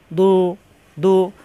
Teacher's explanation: জিহ্বার গোড়া কিনারা উপরের মাড়ি দাঁতের গোড়ায় লাগিয়ে